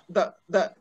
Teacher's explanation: this one is the voiced dental fricative